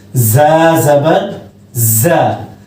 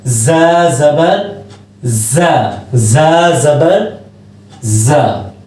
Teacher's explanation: ज़ा को सख्ती से पढ़ेंगे, ज़बान की नोक को नीचे वाले दांतों के पीछे लगाकर पढ़ेंगे, सख्ती से आवाज आएगी बारीक